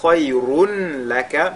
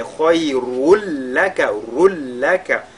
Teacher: Le tanwin qu'il y a sur la lettre ra vont fusionner dans le lam qui suit. On fera idgham bila ghunna.